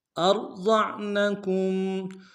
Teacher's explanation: را کو موٹا ادا کریں گے، ضاد کو موٹا ادا کرتے ہوئے عین کے ساتھ ملانا ہے، عین کو گہرائی سے ادا کریں گے، نون کو نم سے ادا کریں گے، کاف کو میم ساکن کے ساتھ ملانا ہے، غنہ کریں گے۔